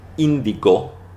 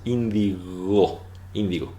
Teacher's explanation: Ahora esta palabra se perdió en castellano por algún motivo, pero la G, recuerden que en castellano la G entre vocales así, cuando le sigue O, A, U, ¿verdad? Bueno, cuando está G, no es una G oclusiva, aquí entre vocales, no lo es una fricativa.